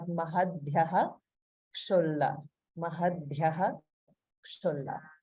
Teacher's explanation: whenever we have the situation where visarga is followed by ksha, the visarga gets pronounced fully. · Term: regular visarga